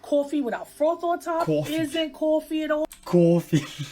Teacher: One feature common in New York City is what we call a raised vowel in words like thought and cloth. It sounds something like aw.